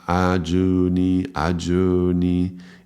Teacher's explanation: I noticed it's actually, it's between a O and a U.